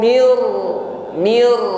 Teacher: nun sukun langsung kita idamkan masukkan pada huruf ro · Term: Idam bilaah